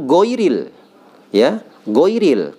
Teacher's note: Harusnya gha ya. Gha itu termasuk huruf isti'la atau tebal ya.